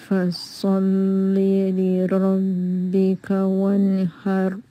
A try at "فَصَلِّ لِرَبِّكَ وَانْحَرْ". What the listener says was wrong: Just need to be heavier little. وَانْحَرُ, وانحر.